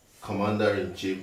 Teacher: Commander-in-chief, the stress is on com.